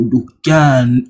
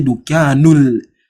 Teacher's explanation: Most of the time, the shadda will be there. So the lam, you skip the lam and then you come directly to where the shadda is. So Dukyan, you not say Dukyanul, you skip it. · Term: Lam Shamsiyah